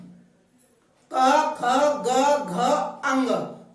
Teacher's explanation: तो आप महसूस करो बोलते समय कि हमारी ये 5 अक्षर एक ही जगह से उच्चारित होते हैं। वो जगह है हमारी कंठ। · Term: कंठव्य